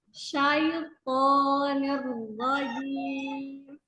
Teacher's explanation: Jadi tahan sedikit di ro-nya. Alirkan pada ro sukunnya baru ke fathah. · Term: ro-nya tasydid